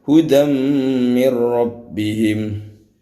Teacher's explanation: idgham artinya memasukkan digunakan dengan dengung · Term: Idgham Bighunnah